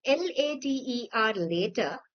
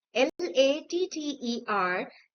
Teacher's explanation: When in the word later, later, the vowel sound is a bit longer. In the word latter, the vowel sound is a bit shorter.